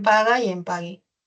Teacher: El fonema oclusivo velar sonoro G se representa con la G y con el dígrafo GU, U, por ejemplo en paga y en pagui.